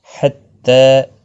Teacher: حتى تاکہ اوپر کھڑی زبر ہے ایک الف کی مقدار کے برابر کھینچ کر پڑھیں گے